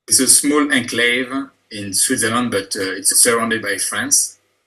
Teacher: he says enclave with a long syllable on the second syllable